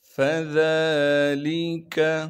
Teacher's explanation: فذالک، فا کو بغیر کھینچے پڑھیں گے کیونکہ فا پر زبر ہے۔ ذال کو باریک کر کے پڑھیں گے اور ذال کو ایک الف کے مقدار کھینچیں گے کیونکہ ذال پر کھڑا زبر ہے۔